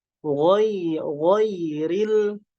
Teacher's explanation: ro berharokat kasroh, ini ro yang murokok, yang tipis